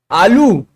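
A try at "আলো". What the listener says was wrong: आलू नहीं है, आलो। आ लो।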